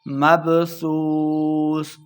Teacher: ناس کالفراش المبثوث، را الف زبر را، 2 حرکات لمع کریں گے۔ مبثوث، واو مدہ ہو رہا ہے، 2 حرکات لمع کریں گے، آخر پہ ہم نے وقف کرنا ہے، مبثوث۔